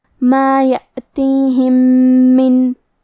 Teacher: ہم پہلے میم کو دوسرے میم میں ملا کے ایک ہی میم غنہ اور تشدید کے ساتھ پڑھیں گے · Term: ادغام متماثلین صغیر